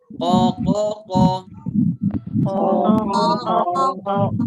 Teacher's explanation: Pangkal lidah nempel ke langit atas. Nempel ke bagian lunak dekat anak lidah kita, dekat lak-lakannya ya Bu, kata orang Sunda mah. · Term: huruf qaf